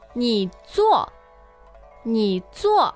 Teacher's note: So 你 third tone as in you.